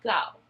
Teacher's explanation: For the word go, the sound g comes from the back of the mouth, and children will typically say dough.